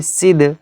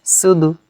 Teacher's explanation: জিভের একদম ডোক বা কিনারা এবং সামনের দাঁতের গোড়া, তো সেখান থেকে অক্ষরটি উচ্চারণ যখন হবে শেষের অংশটা ধাক্কা লেগে বার হবে, ঠিক আছে? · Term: দাল